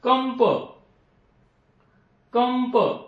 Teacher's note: परंतु इथे जर प असला नंतर तर कंप, कंप म्हणजे इथे म या वर्णाचा उच्चार होतो, कारण नंतर काय आहे, प आहे, प वर्ण आहे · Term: अनुस्वाराचा उच्चार